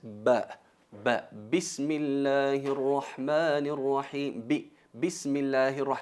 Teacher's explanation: la letra ba se pronuncia pegando los labios